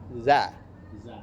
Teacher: ujung lidah ujung gigi nak gak boleh berdesis · huruf Zal Iya Zal itu makhrajnya ujung lidah ke ujung gigi